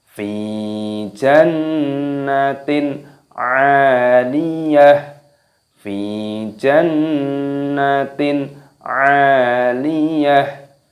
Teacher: Fi-nya panjangkan, ya sukun mad tabi'i 2 ketukan. Jannatin nun tasydid didengungkan. Jannatin fi jannatin kasrah tanwin bertemu dengan huruf ain, hukumnya dibaca idhar halqi. · Selanjutnya pada ayat yang terakhir yaitu ayat yang ke-10 kita baca fi jannatin 'aliyah, fi jannatin 'aliyah. Fi-nya panjangkan, ya sukun mad tabi'i 2 ketukan.